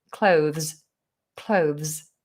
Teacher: I tend to touch my tongue forward, but I don't go too far through.